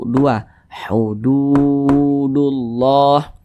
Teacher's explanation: tanda baca dah seperti ini tanda baca domahnya nih maka berarti huruf tersebut dibaca panjang Mad Thobi'i panjangnya dua harakat